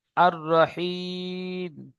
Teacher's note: রর উপরে জাবার এসেছে, তাই রকে পুর করে পড়তে হবে